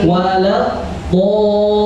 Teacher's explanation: Do 6 harakat, lin 6 harakat, seimbang. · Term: mad lazim